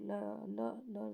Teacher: ला वर्णस्य उच्चारण स्थान विदते दंत